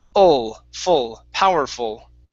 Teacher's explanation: all of them have the same ul sound. It's the schwa into the L.